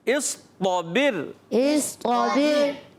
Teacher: صاد کو موٹا کریں گے، طا کو موٹا کریں گے، با اور را کو باریک کریں گے